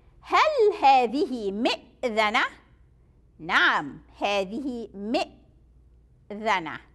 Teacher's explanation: Remember the ذال, you get your tongue out.